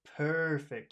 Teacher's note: you don't want to go too quickly through per because that R is a throat sound